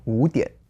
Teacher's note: Two third tones together, the first one becomes the second.